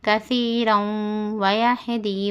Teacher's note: واو میں کیا ہے ادغام مع الغنہ ہے اس لیے گنہ کرنا ہے ہم کثیرا ویہدی واو زبر وا یا ہا زبر یا دال